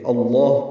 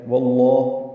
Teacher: لام کو پر پڑھنا ہے وہ حمزہ کی زبر یا واو کی زبر کی وجہ سے، اللہ پڑھیں گے تو تب بھی لام پر ہے، واللہ پڑھیں گے تب بھی لام اسم جلالہ پر ہے۔